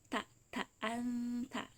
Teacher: huruf ta huruf da huruf tho dia sama makhrojnya yaitu dari ujung lidah bertemu dengan pangkal gigi seri bagian atas